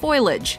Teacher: a classic case of metathesis where the sounds or syllables of a word are rearranged the position of the L and the eye are often swapped